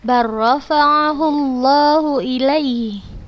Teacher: La sukun, kemudian ro berharokat. Maka langsung kita baca, langsung kita masukkan ke huruf yang keduanya. · Langsung kita baca, masukkan huruf lam itu ke huruf ro-nya. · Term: idgham mutaqarribain